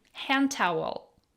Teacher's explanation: We have silent D and soft T.